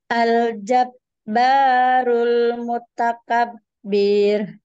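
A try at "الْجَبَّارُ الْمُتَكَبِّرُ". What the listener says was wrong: Bir. Jangan panjang. Bir.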